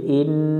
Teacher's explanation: ই মিলবে নুনের সাথে ইন, নুনের উপর তাসদিদ, এই নুনে গুন্না করা ওয়াজিব